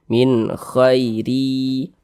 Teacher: Ya, kasrotain. Maka huruf ro dibaca tipis, dibaca tarkik, tipiskan huruf ro-nya.